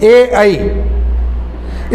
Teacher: जो कंठ और तालु से एक साथ उत्पन्न होते हैं उन्हें कंठ तालव्य भी कहलाते हैं।